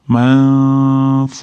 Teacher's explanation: Nunni f chiqadigan joyga yashiramiz. Ya'ni f chiqadigan joyi tepadagi tishlarimiz, ya'ni tepadagi ro'para tishlarimiz pastki labimiz o'rtarog'iga tegishi kerak. Shu yerga olib borib yashiramiz. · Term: ixfo